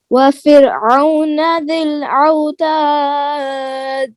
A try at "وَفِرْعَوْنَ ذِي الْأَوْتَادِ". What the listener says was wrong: دال میں قلقلہ کریں, یا آپ بول رہی ہیں نا, یہاں پر سب آخری حرف میں قلقلہ ہو, اس کو واضح کریں.